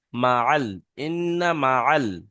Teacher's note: Direct যদি মাল বলেন তাহলে কিন্তু আইনটা বাদ পড়ে যাচ্ছে, মা আল, আইন যাবার আ, মা আল, ইন্না মা আল।